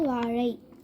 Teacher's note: சிறப்பு லகரம் நாக்கு மேல் அன்னத்தின் பின்புறம் மடக்கி உச்சரிக்கப்படும்.